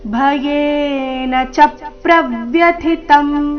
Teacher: ಚಪ್ರವ್ಯತಂ ಚ ಮತ್ತೆ ಪ್ರ ಈ ಎರಡು ಅಕ್ಷರಗಳ ಮೇಲೆ ಆಘಾತ ಬರಬೇಕು